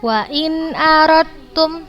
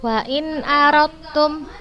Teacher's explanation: Huruf dal dan ta sama makhrajnya tapi sifatnya berbeda. Cara membacanya langsung kita masukkan ke huruf yang kedua tanpa kita sertai gunnah, tidak menggunakan gunnah. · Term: idgham mutajannisain